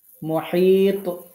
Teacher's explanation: তোয়াতে কলকলা করতে হবে